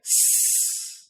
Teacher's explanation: you do that exact same thing but instead you say s you'll find that there is no buzzing s is the unvoiced version of z